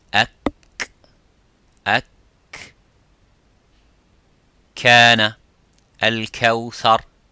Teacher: the kaf touches the roof of the mouth, a little bit touches the bone of the roof of the mouth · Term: the makhraj of the kaf